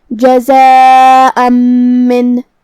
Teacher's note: آخر میں جو کہ حمزہ پہ تنوین زبر ہے پھر حرف المیم ہے کلمت من میں تو یہاں حکم ہوا ادغام بغنہ. ہمیں یہ تنوین کو میم میں ملا کے غنہ اور تشدید کے ساتھ یہ حکم کو ادا کرنا ہے · یہ مد واجب متصل ہے لہذا ہم اپنی آواز 4 مد کے برابر لمبی کریں گے